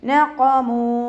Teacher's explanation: മീമിൻ്റെ കൂടെ അലിഫ് മദ് വന്നു, 2 കൗണ്ട് നീട്ടിക്കൊടുക്കുക. നഖമൂ ഖാഫ് ഇസ്തിഅലാദ് ലെറ്റർ ആയതുകൊണ്ട് തഫ്ഹീം ചെയ്തിട്ട് ഉച്ചരിക്കുക